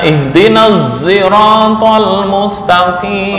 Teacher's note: Artinya sod dibaca ishmam, ya, diganti dengan suara za.